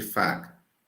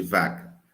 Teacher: Então, consoante Fê, Fê de faca, V de vaca. Então, Fê é desvozeada e V vozeada